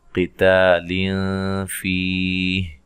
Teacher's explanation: قاف کو موٹا ادا کریں، تا کو باریک